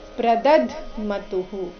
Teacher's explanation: ಬಾಯಿಂದ ಪ್ರದದ್ ಅಂತ ಬರಬಹುದು ಆದರೆ ಅದು ತಪ್ಪಾಗಿದೆ ಸರಿಯಾದ ಉಚ್ಚಾರಣೆ ಪ್ರದದ್ದ್ ಮತುಹು ಪ್ರದದ್ ದ ಆದ ನಂತರ ಅರ್ಧ ದಕಾರ ಬರಬೇಕು